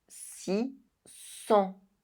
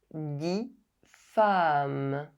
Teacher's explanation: The number 6 is pronounced si when the word that follows starts with a consonant. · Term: liaison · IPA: [si]